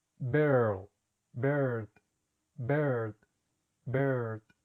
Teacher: lengua está abajo, comienza el sonido de la E y sube hacia el paladar. Er, er. Ahora vamos a practicar con los ejemplos. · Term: E larga